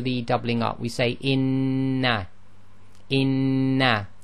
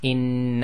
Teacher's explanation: We say in in we hold the noon for a count of 1.5. Okay. So it's in and the timing is very important and your tajid teacher will check that whenever you see a shada um under normal circumstances it's held for a count of 1.5.